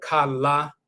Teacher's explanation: When you say kala the l the tongue is tapping the roof of the mouth once.